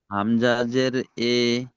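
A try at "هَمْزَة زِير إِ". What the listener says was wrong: হামজা জের ই, হর্ষই দিয়ে পড়া হয়, ই।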